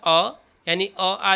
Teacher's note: अकुह का मतलब होता है अ, यानी अ आ जो होते हैं वह कंठ से बोले जाते हैं